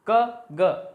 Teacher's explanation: क और ग का उच्चारण करके देखिए, मुख से बहुत कम हवा निकलती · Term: अल्प प्राण